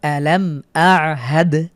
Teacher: পরবর্তী উদাহরণ আলাম আহাদ, এখানে মিম সাকিনের পরে হামজা হয়েছে, গুন্না ছাড়া স্পষ্ট করে পড়ব আলাম আহাদ, শেষে দালের উপরে সুকুন থাকার কারণে কলকলা করে পড়ছি